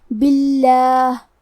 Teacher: کلمت باللہ میں کیونکہ با کے نیچے زیر ہے تو یہاں بھی لفظ الجلالہ مطلب کلمت اللہ کے لام کا حکم ہے ترقیق، مطلب ہم حرف اللام کو پتلی آواز میں پڑھیں گے